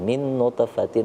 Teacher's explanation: Ini kalau kita perhatikan nutfatin itu huruf to-nya berada di tengah kata, maka berlakulah dia qalqalah sughra, mantulnya dikit aja